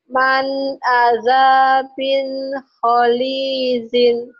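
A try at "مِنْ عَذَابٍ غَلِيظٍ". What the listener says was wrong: Min azabin go bukan kho golizin. Orang Jawa itu go tuh jadi kho ya, enggak ngerti nih. Kho jadi kho ini tukar-tukar ini go gigi. Gopur. Gomloh. Ada kan gomloh.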